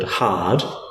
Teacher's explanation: So it's a bit like you breathe through the vowel to create a little bit of hissing sound and then you go into the vowel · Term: glottal fricative